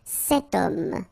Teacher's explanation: Remember, H is not pronounced, okay? So you get the sound of O at the beginning of this word